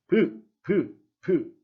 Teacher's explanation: 소리를 내기 위해서는 반드시 윗입술과 아랫입술이 붙었다 떨어지는 것, 즉 막힘이 동반되어야 합니다. 절대로 위아래 입술을 붙이지 않고 소리를 낼 수 없습니다. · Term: 비읍 소리